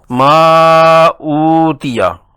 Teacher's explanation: حروف مدہ ما کو 4 حرکات کھینچ کر پڑھیں گے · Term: مد منفصل